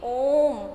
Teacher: हिंदी भाषा में प्लुत स्वर एक ही है और ये है ओम, और इनको बोलते समय हमें अन्य स्वर की अपेक्षा 3 गुना समय लगता है।